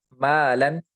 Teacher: الف سے پہلے میم ہے، میم باریک حرف ہے تو الف کو بھی باریک پڑھیں گے